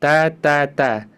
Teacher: Ada hamsnya tapi tidak sampai berlebihan.